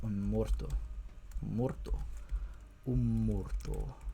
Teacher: the stress is penultimate because it's a heavy syllable